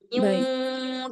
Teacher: cara bacanya harus langsung dimasukkan ke wau terus didengungkan